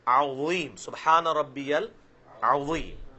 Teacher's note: وا کو موٹا کر کے زیڈ کی آواز سیٹی کی آواز نہیں آئے گی، نرمی کے ساتھ عظیم، سبحان ربی العظیم.